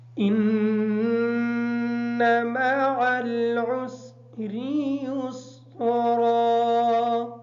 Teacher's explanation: مع العسر، معل کی عین بھی اور عسری کی عین بھی کلیئر کر کے پڑھیں گے، اور یسرا کی جو را ہے حالت وقف کی وجہ سے یہ ساکن ہو جائے گی